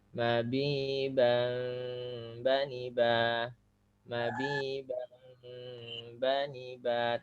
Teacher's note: tanwinnya samar ya karena langsung pindah ada suara mim di tengah-tengah itu ya. Bang ba tapi tidak murni mim hanya samar aja. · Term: Iklab